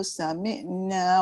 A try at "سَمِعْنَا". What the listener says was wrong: Sami'na. Dia kalau sami'. Sami'. Dia pergi hidung kan? Dia pergi dekat tekak. Sami'. Tekan ke bawah. Tak sampai Sami' tu dekat hidung lah kan? Tekankan ke tekak. Sami'na. Tak sampai. Dia tak sampai ke tengah halkum. Tekan lagi.